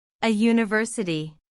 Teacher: The word university starts with the letter U, which is a vowel, but it has a Y sound at the beginning, which is a consonant sound